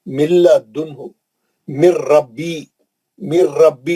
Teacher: गुन्ना नहीं करेंगे, नून पढ़ेंगे ही नहीं, सीधा लाम और रा में चले जाएंगे।